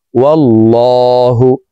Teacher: وعسى أن تحبوا شيئا وهو شر لكم ওয়াও লাম জবর ওয়াল লাম খারা জবর ল আল্লাহ শব্দের আগের হরফে জবর আছে এই কারণে এই লামকে ল বলে অর্থাৎ মোটা করে পড়ব